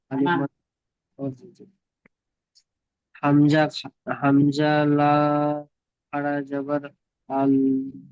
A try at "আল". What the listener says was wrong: আল বললে তো দাঁড়িয়ে আছে, আল বলে আপনি জিভটা উপরে ঠেলে ধরে রাখছেন, ধরে রাখবেন না।